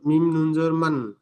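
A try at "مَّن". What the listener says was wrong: মিম মিম জাবার মাম। মিম নুন জাবার মান ছিল, কিন্তু এই নুন সাকিনের পরে বা আসার কারণে নুনটি পরিবর্তন করে মিমের সাথে মিলিয়ে পড়তে হবে।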